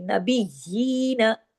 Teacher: नून जबर ना को ज्यादा नहीं खींचना, बारीक पढ़ना है। नून को, या को भी बारीक पढ़ना है।